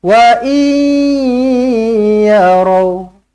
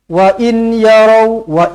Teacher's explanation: Jumpa dengan huruf ya, kena senyum. Dalam senyum tu kena ada dengung lah.